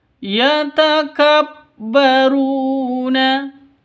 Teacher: وَجَعَلْنَا لَكُمْ فِيهَا مَعَايِشَ يَتَكَبَّرُونَ فِي الْأَرْضِ بِغَيْرِ الْحَقِّ yatakabbaruna, ru panjang dua ketukan karena di sini ada waw mati diawali dengan dhammah. Yatakabbaruna, begitu cara bacanya. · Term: mad asli